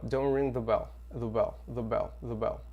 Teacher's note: esse the aqui, gente, ele é quase que não é pronunciado